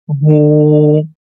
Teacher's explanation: we have to stretch dhamma sound for two count. As you can see, letter ha has dhamma on the top, it's hu, and now we have to make it long because of small waw, it becomes hu.